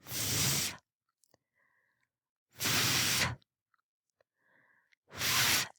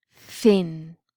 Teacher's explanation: The next pair, unvoiced, is th, th, th as in thin.